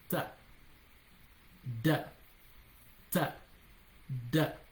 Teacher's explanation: Ta, da, ta. So for ta, the tip of your tongue is going to touch the front incisors, the inner part of the incisors tip